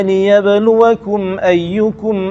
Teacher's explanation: Liyabluwakum mim temu dengan hamzah tak boleh dengung.